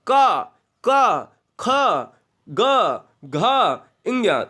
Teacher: जो वर्ण, जो व्यंजन कंठ से बोले जाते हैं वो कंठी स्पर्श व्यंजन कहलाते हैं